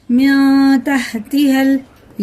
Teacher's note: یہ نون سائلنٹ کر کے پڑھنا ہے، ناک میں لے جا کے ایک الف کے برابر چھپا کے پڑھنا ہے